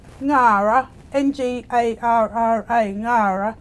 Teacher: the ng syllable that you'll hear and what happens is the the back of the tongue is at the roof of the mouth and then releasing so we're pushing the sound up through the nose